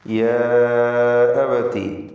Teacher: ഇതിൽ അലിഫിൻ്റെ ദീർഘം മദ് മുൻഫസിൽ ജായിസ് എന്ന ദീർഘമാണ്. 4-5 ഹറക്കത്തിൻ്റെ അളവിൽ ദീർഘം നൽകൽ അനുവദനീയമാണ്. ഖസ്ർ ചെയ്യുകയുമാവാം, അഥവാ 2 ഹറക്കത്തിൻ്റെ അളവിൽ മാത്രം തബീഇയ ദീർഘം നൽകി മതിയാക്കാം.